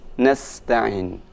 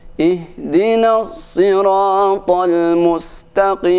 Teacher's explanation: untuk huruf sin itu dibaca dengan tipis nasta'in. Adapun huruf shad dibaca sedikit ada penebalan, yaitu sedikit dimonyongkan.